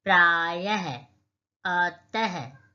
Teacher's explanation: देखिए, हिंदी में यह ह के रूप में बोला जाता है। जब विसर्ग का चिन्ह होगा तो उसमें आप देखिए अंत में ह की आवाज आएगी